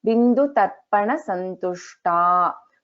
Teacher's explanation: In this Bindu Tarpana Santushta, Sha is Shanmukha Sha and Ta is Alpa Prana Ta.